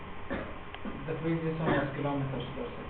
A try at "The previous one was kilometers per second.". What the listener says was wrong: Okay, well, you have the wrong inflection at the end because it sounded like a question. You know, inflection is important.